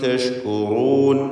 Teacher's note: വലഅല്ലകും തഷ്കുറൂൻ. തഷ്കുറൂൻ, റൂ എന്ന റാഇൻ്റെ ഉച്ചാരണം തഫ്ഖീമോടുകൂടി തടിപ്പിച്ചുകൊണ്ടായിരിക്കാൻ ശ്രദ്ധിക്കുക.